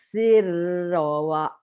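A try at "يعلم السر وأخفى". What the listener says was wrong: Ternyata seperti ditahan. Kebanyakan kalian baca ya'lamus sirra gitu. Baca dobelnya iya cuman kurang nahan. Ya ya'lamus ya'lamus sirra wa akhfa.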